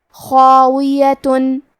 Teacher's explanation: کلمت خاویہ میں حرف الخا ہے اور خا کی ادائیگی حلق کے اوپر والے حصے سے ہے. خا حروف تفخیم میں سے ہے، تو ہم یہ حرف کو بھاری آواز میں پڑھیں گے.